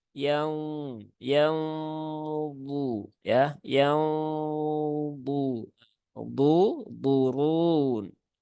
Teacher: Nah, kalau seperti itu dia gunnahnya tipis baru ditebalkan ketika sudah memasuki huruf bu. Tetapi yang lebih tepat adalah ya gunnahnya ditebalkan dari awal. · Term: ikhfa